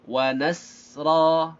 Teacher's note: Sinnya ada rakhawah dan hamas, ra-nya panjang 2 harakat